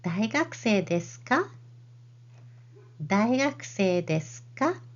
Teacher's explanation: you use the raised intonation only at the end